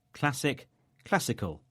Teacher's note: In both words, the stress is on the same syllable, this time cla.